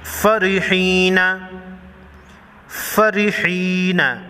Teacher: ہا یا زیر ہی یا مدہ ایک الف کے مقدار کھینچ کر پڑھیں گے یعنی 1 سیکنڈ